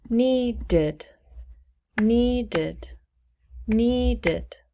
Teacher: we change it to past tense it becomes needed needed needed two syllables and the ed is pronounced id